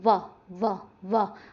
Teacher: अगर आपको फिर भी याद ना रहे या फिर आपको लगे कि भाई बहुत मुश्किल है, तो मेरा एक तरीका याद रखिएगा, जब भी पेपर में आए एक बार वहाँ पे बोल के देखना, जैसे व आ जाए, व व व, दांत आगे लग रहे हैं होठों पे आके तो ध्यान रखिएगा दंतोष्ठ है।